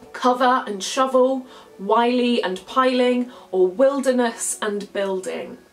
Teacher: two unaccented syllables are different so by that i mean that the stressed syllables rhyme but the unstressed syllables that follow don't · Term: half rhyme